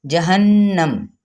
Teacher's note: جہنم، یہاں پہ نون پہ غنہ، میم پہ وقف کیا، وقف بالاسکان